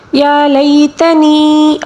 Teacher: یہاں پر یا مدہ ہے، اس کو ایک الف کے برابر کھینچ کر پڑھیں گے